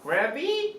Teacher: saying gravy with a rising intonation 그러니까 gravy 이렇게 묻는 게 아니고 이 아시아 어시스턴트들이 이렇게 말합니다.